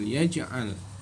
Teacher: Lengkap bacaan contoh bacaan qalqalah surah adalah alam yaj'al. Qalqalah jimnya dibaca memantul